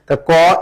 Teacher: ক এটা অল্পপ্রাণ কারণ শ্বাস কম লাগে